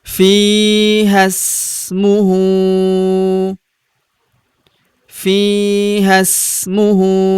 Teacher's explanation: Huruf hu kita panjangkan 2 harokat karena berharokat u terbalik